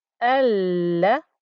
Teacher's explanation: we have to imagine it's a true Hamza, and we start it with an a noise, so it becomes al. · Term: Hamzatul Wasl